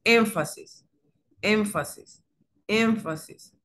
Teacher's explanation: la nasal labiodental que solamente entra en función entonces el labio inferior con los incisivos superiores. Y la podemos observar en la palabra énfasis, énfasis, énfasis.